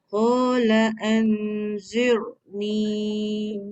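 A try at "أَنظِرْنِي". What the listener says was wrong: Wa dah tebal dah tapi ada sedikit sofir. Ra tu jadi tebal juga.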